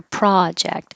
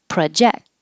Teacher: And the noun, project, with the stress on the pra and make it longer